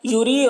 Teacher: یوری را کو باریک پڑھیں گے